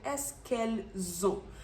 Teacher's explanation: which is O So merge them pronounce them like one and we're not just merging them I change the sound from s s to Z Z